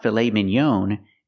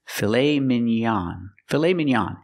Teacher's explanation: we use the a sound the open a a like hot and stop